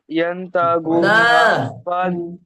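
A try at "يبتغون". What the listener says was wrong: এটা বা আছে, দেখেন, ইয়াবতাগুনা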